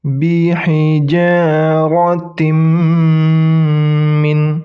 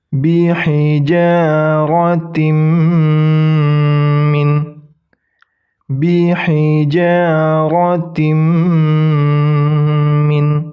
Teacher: Ingat dilebur, nunnya hilang, n-nya. Tin bukan tin min tapi tim. Tim min. Dan berdengung. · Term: idgham bigunnah